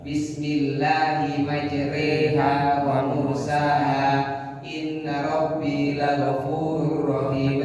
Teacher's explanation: bacaan imala, memiringkan bunyi fathah kepada kasroh